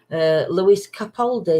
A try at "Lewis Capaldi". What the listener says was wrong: Yeah, Louis. It's Louis, isn't it? It's not Lewis. It's Louis Capaldi. It's spelled Lewis, but I think it's pronounced Louis.